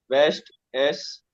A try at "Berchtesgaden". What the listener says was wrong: नहीं, वेस्टिस एक साथ बोलेगा, वेस्ट और टेस एक साथ बोलेगा, अलग अलग मतलब।